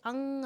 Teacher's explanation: अनुसार के उच्चारण में हवा केवल नाक से बाहर निकलती है